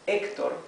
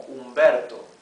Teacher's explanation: the H, when it's by itself, is totally mute. It's not even, doesn't even have an exhalation sound like in English, right? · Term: mute letter